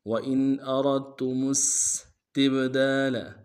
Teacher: وَإِنْ أَرَدْتُمُ اس میں حمزہ کو نون سے ادا کریں گے اور واو کو موٹا ادا کرتے ہوئے دال کے ساتھ پھر تا کے سامنے لانا ہے، تا کے اوپر تشدید زور دیں گے اور میم کو آگے سین کے سامنے لانا ہے، سین کی سیٹی باریک ہوگی